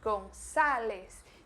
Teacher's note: Mas presta atenção na pronúncia, porque ele Gonzales se escreve com la Z e la A é uma A mais aberta, Gonzales. Então o A do espanhol é bem aberto e por isso a gente tem que pronunciar ele com a boca mais aberta do que a gente normalmente pronuncia em português